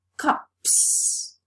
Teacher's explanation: the last sound of the singular noun is voiceless so the plural morpheme is realized as another voiceless sound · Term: established progressive assimilation of voice